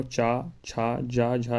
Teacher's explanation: चा वर्ग का जो स्थान होता है तालू